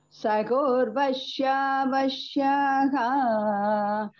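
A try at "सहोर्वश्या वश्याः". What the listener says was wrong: Ha. See that ha cannot be g. Saho.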